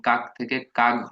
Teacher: অঘোষ ছিল ক, এখন ঘোষ গ হচ্ছে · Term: ঘোষী ভবন